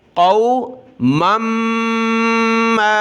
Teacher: मीम के ऊपर तशदीद है तो नाक में आवाज़ पैदा होगी, गुन्ना होगा और मद की वजह से खींचना होगा।